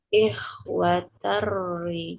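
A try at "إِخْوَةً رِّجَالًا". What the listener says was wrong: Terri, ter tipis karena masuk ke ri yang tipis. nggak boleh nggak boleh tebal, harus tipis. Ter, aslinya tan, ikhwatan rijalan menjadi ikhwater dan jangan baca ter, tapi terri. kurang tipis. Coba ter saja. Ri, ya ikhwaterri.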